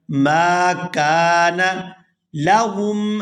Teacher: میم کو الف مدہ کی وجہ سے اور آگے کاف کو بھی الف مدہ کی وجہ سے کھینچ کر ادا کیا جائے گا